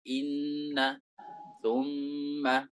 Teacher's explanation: suara ghunah itu keluar dari khaisyum